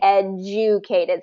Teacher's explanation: Yeah, the other thing that happens here is that invisible Y sound. So when there's a consonant and then the letter U, there gets a Y sound to it